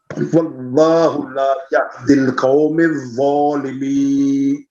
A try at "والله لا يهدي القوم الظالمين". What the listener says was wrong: قومز میم کے اوپر زبر ہے، پھر پڑھیے.